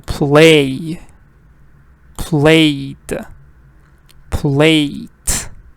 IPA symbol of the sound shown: eɪ